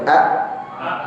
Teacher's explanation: Pertama dia tertutup tatkala takhrujul hamzatus sakinah. Dia nutup katupnya pita suara kita tatkala mengucapkan hamzah yang sukun.